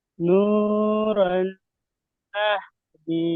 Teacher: তানবিনের পরে নুন এসেছে, একে তানবিনের সাথে মিলিয়ে একালিক পরিমাণ গুণনা করে পড়তে হবে। একে ঈদগামে নাকিস বলা হয়।